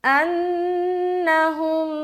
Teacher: نون کے اوپر کیا ہے شد ہے تو نون مشدد کا غنہ کریں گے. انہم، یہاں پر پھر غنہ ہو رہا ہے اور یہ ہے ادغام شفوی کا غنہ.